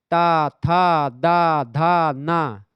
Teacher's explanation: सब में जीभ जो है आपकी दांत को स्पर्श करे तो दंत आपके ताथ दादा ना हो गए ठीक है कंठ से का